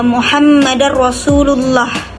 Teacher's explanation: bunyi tebal antara a dan o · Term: tafkhim